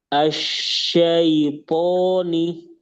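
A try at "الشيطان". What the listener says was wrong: Ketika bersambung itu toknya kembali lagi. Tapi pas sendiri tadi bagus. Poni. Asyaitoni.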